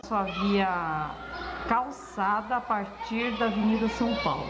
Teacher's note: Esse R caipira é notado em diversos momentos, como em partir, descer e aeroporto.